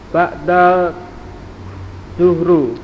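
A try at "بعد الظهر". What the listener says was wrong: Ba'da duhri. Duhri di kasroh haram mudhof ilaih.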